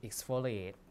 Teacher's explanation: this is an f which is a voiceless sound